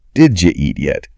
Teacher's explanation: When Americans say, did you, they don't really enunciate the two separate words. They merge them together so quickly that it creates a completely new sound. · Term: assimilation